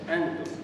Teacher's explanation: أن تخفي النون عند التاء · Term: الإخفاء